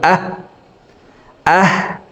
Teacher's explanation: হলকের শুরু থেকে হাফের উচ্চারণ হবে। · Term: ছোট হা